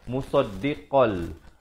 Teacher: Jadi asalnya musaddiqan, di sini baca musaddiqal. Musaddiqal terus masuk ke dalam lam tanpa didengungkan. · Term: idgham bila gunnah